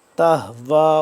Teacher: رسول بما لا تہوا، تا حاضبتا، اس ہا کو چشمے والی جو ہا ہے اس ہا کو سینے کے پاس سے اور حلق کے آخری حصے سے یہ ادا ہوتا ہے